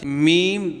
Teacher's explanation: बा मीम वाव बा दोनों होठों के तर हिस्सा से मी दोनों होठों के खुश्क हिस्सा से